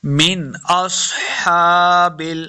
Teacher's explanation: سواد حروف مستعلیہ سے موٹا کریں گے · ان کان من اصحاب، دیکھیں اب یہاں پہ من کے اوپر غنہ نہیں کرنا، یہاں پہ اظہار کا قاعدہ ہے. آگے حمزہ جو ہے یہ حروف خلقی سے ہے تو یہاں پہ اظہار کا قاعدہ ہوگا، یعنی بغیر غنہ کے پڑھیں گے